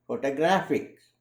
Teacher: The word photographic, the stress is on the syllable graph.